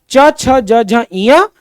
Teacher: तालव्य में च, छ, ज, झ, ञ और उसके साथ-साथ छोटा इ, बड़ा ई, य और श ये पूरा तालव्य में आएगा